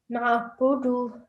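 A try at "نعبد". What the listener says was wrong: Excellent. Good. Well done.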